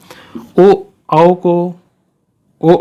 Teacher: ओ औ जो बोलते हैं तो इसकी ध्वनि में क्या होता है? कंठ से तो ध्वनि निकल रही है, लेकिन होठों का प्रयोग ज़्यादा हो रहा है, तो इसलिए ये कंठ और होठ का मिला दिया जाता है, तो यहाँ पे बन जाएगा कंठोष्ठ।